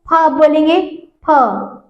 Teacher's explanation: आपके जितने दोनों होठ जो है वो आपसे एक दूसरे से टच हो रहे हैं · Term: ओष्ठ